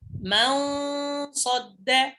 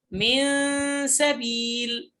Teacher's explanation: غنة الإخفاء تفخم إذا كان بعدها مفخم، وترقق إذا كان بعدها مرقق. هكذا من صد، هكذا الغنة هنا مفخمة.